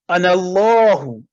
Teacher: اسی طرح بہت سی جگہوں پہ اللہ تعالیٰ جب کہتا ہے کہ میں اللہ یعنی انا اللہ، تو یہ بھی انا علیحدہ لکھا گیا، اللہ علیحدہ پڑھا تو ہم نے پڑھا، لیکن انا اللہ تو اس میں دونوں الف سائلنٹ ہو گئے